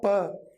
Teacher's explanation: प बोलते ही अटका, दोनों होठ मिल गए।